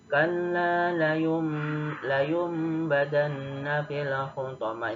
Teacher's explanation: bunyi nun sukun atau tanwin berubah menjadi huruf mim, ya, ditahan dan gunnah dengung 2 harokat. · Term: iklab